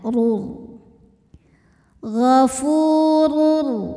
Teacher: rnya berbaris tanwin dammah maka dibacanya tebal pangkal lidah naikkan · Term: tafkhim